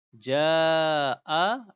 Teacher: yang sama Jaa artinya adalah datang Nah Alif ya panjang ja aslinya dua harakat ternyata huruf berikutnya Hamzah maka naik menjadi empat atau lima harakat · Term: mad wajib muttasil